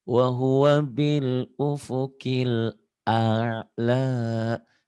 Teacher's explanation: Ainnya tuh mantep. Jadi kayak keselak ya Bu ya.